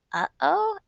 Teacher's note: avoid saying uh-oh as much as possible because it does have that glottal stop sound in it